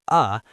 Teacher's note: The schwa is the relaxed, unstressed vowel sound like uh that allows for speed.